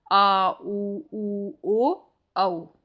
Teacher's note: जिनका उच्चारण करते समय जीभ पीछे की ओर रहती है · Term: पश्च स्वर